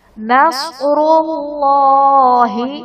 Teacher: نصر اللہ، صاد حرف مستعلیہ پر پڑھا جائے گا. را پر پیش ہے، را کو بھی پر پڑھیں گے. اور اللہ عز و جل کے لام سے پہلے پیش ہے تو یہ لام بھی پر یعنی موٹا پڑھا جائے گا.